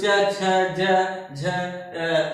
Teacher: हमारी जीवा जो है वो तलुए को टच करती है, तो च छ ज झ ये जो ध्वनियां उच्चारित होती हैं, इसलिए इसे ताल कहते हैं, यानी कि ताल ध्वनियां कहते हैं, तालव्य कहते हैं इसे, चाहे ताल कहिए चाहे तालव्य कहिए।